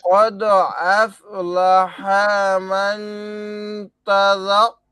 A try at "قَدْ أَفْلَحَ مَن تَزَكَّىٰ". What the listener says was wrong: আর কদ আফলাহা, এটা অর্ধে খালি টান হচ্ছে কেন ভাই? এটা টান ছাড়া করতে হবে। কদ আফলাহা, হ্যাঁ তাড়াতাড়ি ভাই, হরকত উচ্চারণ